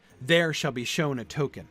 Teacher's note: Shown is emphasized, and there is not, right? · Shall is not emphasized. Shall is an unstressed syllable in that line.